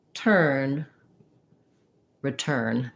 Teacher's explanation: if i say return the e makes it too tense it makes that unstressed syllable sound stressed or too long